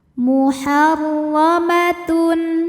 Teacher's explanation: Huruf ra dibunyikan secara tafkhim karena barisnya di atas fathah. Maka dibaca dengan tebal.